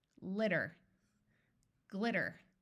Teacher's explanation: I'm doing it with the standard American pronunciation which I do automatically where the T sounds more like a d